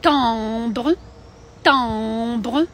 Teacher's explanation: Це начебто наша «е» українська, да? «Е», «е» з носом, з носовим.